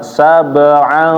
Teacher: Pertama dengungnya ditahan ya Bapak. Sab'an, jangan langsung pindah.